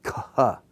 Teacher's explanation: it's just taking the unvoiced letter, putting aspiration to it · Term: aspirated